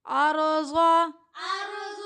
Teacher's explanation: را یہاں پہ موٹی پڑھی جائے گی کیونکہ را ساکن ہے، اس سے پہلے زبر کی حرکت ہے. ضاد حروف مستعلیہ میں سے ہے تو یہ حروف موٹا پڑھا جائے گا.